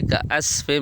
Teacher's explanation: عین کی جگہ الف نہ ہو